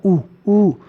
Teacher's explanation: ऊ बोलने के लिए तो साहब हमारे को गोल करना पड़ रहा है होठ को, तो इसका मतलब ऊ तो वर्तामुखी हो जाएगा, ऊ तो वर्तामुखी हो जाएगा।